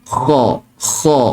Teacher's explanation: Dia seolah-olah macam kita nak berkahak tu, kita nak buang kahak. Okey, kalau yang saya belajar hujung kerongkong ataupun hujung halqum. Ada yang tadi dalam live yang petang tadi, ada yang kata pangkal kerongkong.